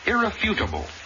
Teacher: the word irrefutable accent on the third syllable not the second